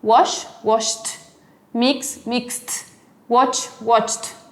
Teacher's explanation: Entonces el pasado solo lo pronuncio con T.